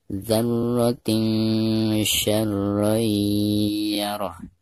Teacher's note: Dzarratin, perhatikan ada tanwin kasrotain di bawah ta marbutoh lalu berhadapan dengan salah satu huruf ikhfa, di sini huruf shin ya. Maka cara membaca tanwin yang ada di bawah ta marbutoh tersebut itu harus disamarkan disertai dengan gunah